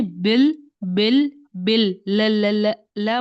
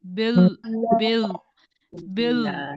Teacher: जबान का पिछले हिस्से को उठा दिया हमने तो वो जो हो गया वो लाम मोटा हो गया